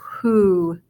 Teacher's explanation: instead of an O, it actually has a long U sound